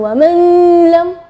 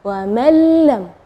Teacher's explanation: Ya, di situ kita bacanya wa mallam ya, jadi huruf nunnya tidak ada, atau kita dibilang idgham ke huruf berikutnya dan gunnahnya tidak ada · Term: idgham bila gunnah